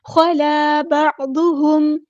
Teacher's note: عین کو وسطی لیکن مڈل تھروٹ سے ادا کرنا ہے. ضاد ہمارا ہیوی لیٹر ہے پورا ادا کریں گے. ہم ہاں ہم نے سمپل ادا کرنا ہے اور میم ساکن پر اظہار شفوی اور ٹائم نہیں دینا.